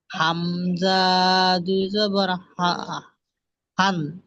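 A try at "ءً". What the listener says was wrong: হামজা একটু টান হয় না, বিনা টানে পড়তে হয়। হামজা দু জবর আন।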